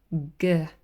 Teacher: you can really feel the closure and it's happening right here at the back where the back of the tongue um touches the soft pallet